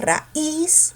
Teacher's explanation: la cerrada se pronuncia con mayor fuerza de voz, porque tú dices raíz, esa cerrada obligatoriamente se tilda.